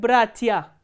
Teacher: Here stress is on the first syllable, not on the ending.